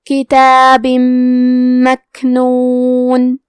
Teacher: کلمت مکنون میم حروف الادغام بغنہ میں سے ہے، تو ہم تنوین کو میم میں ملا کے غنہ اور تشدید کے ساتھ یہ حکم کو ادا کریں گے